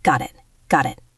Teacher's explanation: In American English, the T in got connects to the I in it. It sounds like got it.